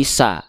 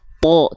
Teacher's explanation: Kalau huruf tebal ketika dia berharokat fathah keluarnya bukan bunyi vokal a, tapi menjadi bunyi vokal terdengar seperti vokal o kalau huruf tebal.